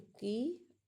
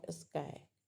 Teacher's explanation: की एस्पिरेटेड है। एस्पिरेटेड है और स्काई अनएस्पिरेटेड है।